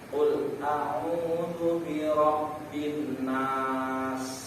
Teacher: Nah, huruf sin ini huruf desis. Ya, jadi kalau kita melafalkan huruf sin harus ada desis